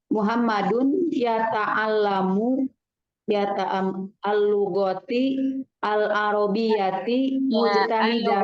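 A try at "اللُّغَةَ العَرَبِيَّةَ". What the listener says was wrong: Al-lughata fathah semuanya, tak marbutonya. Iya, Muhammadun yata'allamul lughatal arabiyata.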